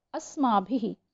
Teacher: तो आपको दिखाई दे रहा होगा अस्माभिः, यानी कि भ के पहले छोटी की मात्रा है, तो वो जो विसर्ग का जो साउंड निकल रहा है वो ह के रूप में होता है, लेकिन वो जिस मात्रा में के पहले मात्रा लगाई जाती है जिस भी शब्द पर, जिस भी अक्षर पर, उसी मात्रा के साउंड जैसा ह निकलता है।